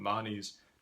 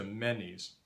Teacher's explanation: the A in the first syllable gets pulled forward toward the I and pronounced in the front of the mouth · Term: umlaut